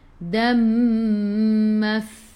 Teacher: gigi atas menyentuh perut bibir bawah, kena ada angin sifat huruf fa